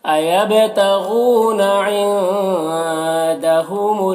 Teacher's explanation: عندہ کے نون میں اخفا ہو رہا، نون کی آواز کو ناک میں چھپا کر پڑھیں گے۔